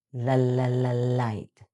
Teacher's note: Your tongue tip touches the ridge right behind your upper teeth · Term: light L